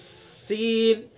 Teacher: ایک ہوتا ہے سین، چھوٹا سین، اس کے اندر صفات غیر متضادہ میں سے صفیر پائی جائے گی، چونکہ ایک تیز سٹی کی آواز نکلتی ہے